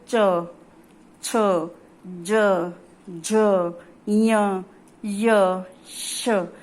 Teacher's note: जो जीभ है आपकी वो तालु से स्पर्श करेगी